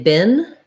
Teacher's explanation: This is a good one to look at because many people tend to mispronounce it as the same as bean, which has the tense E sound. In American English, we say bin, just like this word bin, like garbage bin, and we use the lax I sound.